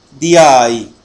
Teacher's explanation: صوت الياء موجود في بعض اللهجات العربية كلفظ حرف الجيم في اللهجة الكويتية في نطق كلمة دجاج دياي